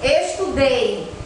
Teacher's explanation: o ei fica junto na mesma sílaba e não se separa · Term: ditongo